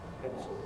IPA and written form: ˈpentso (pencil)